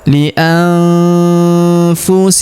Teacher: Huruf nun sukun bertemu huruf fu, maka nun sukunnya melebur ke huruf fu. Kita baca dengung dan samar. Dengungnya kita tahan 2 sampai 3 harokat.